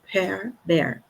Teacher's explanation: a diferença acaba sendo marcada pela aspiração, né? Esse sopro de ar.